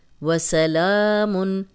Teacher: لام پہ کھڑی زبر ہے، 2 حرکات لمبا کیا ہے